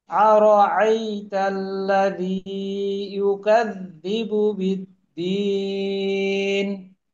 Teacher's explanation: ওই দ্বিতীয় যে হামজা না, ওই হামজার উচ্চারণটা আপনার একটু উপরের দিকে উঠে গেল, যেটা আইনের দিকে চলে যাওয়া। তো হামজা আরো শক্ত করে, আর আইতাল্লাযী, আর আইতাল্লাযী।